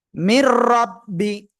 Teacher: নুন সাকিনের পরে ঈদগামে বেলাগুন্নার অক্ষর র আসছে গুন্না ছাড়া মিলিয়ে পড়বেন